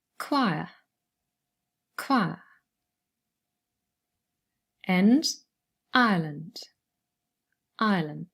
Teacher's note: and then same for choir and ireland we have i plus schwa